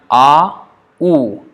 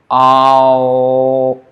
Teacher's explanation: when we chant A, U, and we transition from A to U, A, halfway is O. So A plus U becomes O, halfway, that one.